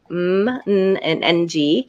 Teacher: they're continuous sounds but the air is actually coming through the nose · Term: the nasals